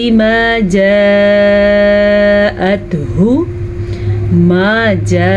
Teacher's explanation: مد کی مقدار 5 حرکات عربیہ ہے تو آپ نے لمبا بھی اس کو تقریباً 4 سے 5 سیکنڈ تک کرنا ہے. ہا کو واضح کر لیجئے گا.